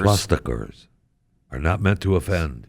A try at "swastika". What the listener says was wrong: There's no R in the word swastika. No R in the word swastika. No.